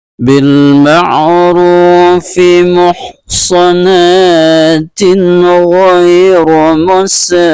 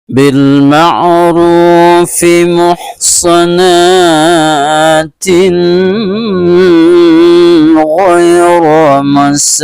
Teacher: maka ini dibaca dengan secara jelas dan terang, tidak boleh berdengung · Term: izhar